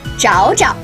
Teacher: note that the second jiao is pronounced in a neutral tone